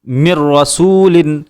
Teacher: نون ساکن کے بعد را ہے، ادغام کرتے ہوئے ہم نے یہاں غنہ نہیں کیا۔ ایسے ہی لام کی مثال ملم، نون ساکن کے بعد لام ہے، ملاتے ہوئے ہم نے یہاں غنہ نہیں کیا۔